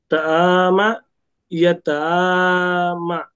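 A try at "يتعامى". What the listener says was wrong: মা টান হবে, ইয়া তাআমা।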